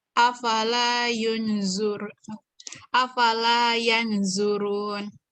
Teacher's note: Tebal, dengungnya panjang 3 harakat